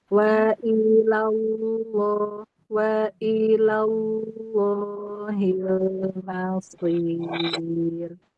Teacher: Ketika ketemu tasdid jangan nyantai. Contohnya waallah la itu lnya jadi panjang.